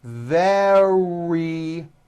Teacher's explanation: very starts with a v sound followed by a strong r